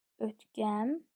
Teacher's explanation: Vurğusu sonuncu hecədadır. Ötkəmlik, bəli, sona düşür.